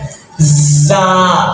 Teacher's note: زیادہ تر یہ نیچے والے دانت سے لگتی ہے، زا، سیٹی کی آواز میں اس کو پڑھیں گے